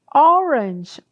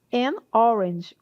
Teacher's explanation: Orange, O, né? Um O bem aberto. Então, som vocálico de O.